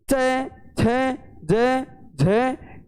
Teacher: जब हम च वर्ग का उच्चारण करते हैं तो अपनी जो जीवा है वो कहाँ पर टकराती है? तालु से। तालु से टकराती है साथियों। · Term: तालव्य